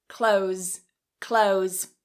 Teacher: in Rapid speech, what many native speakers do is instead of trying to pronounce that TH in clothes, we cut the TH and we say close